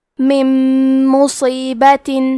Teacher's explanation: ادغام کا معنی ہے حرف کو حرف میں داخل کرنا. تو ہم نون ساکن کو میم میں ملا کے غنہ اور تشدید کے ساتھ یہ حکم کو ادا کریں گے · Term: ادغام بغنہ